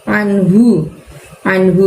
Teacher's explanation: Anhu di situ pakai ain, maka keluarkan suara kalian dari tenggorokan bagian tengah. Tidak perlu membuka mulutnya.